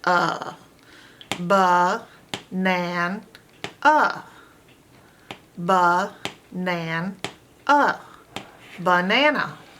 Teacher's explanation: any open a that's not accented is a schwa sound like in the word banana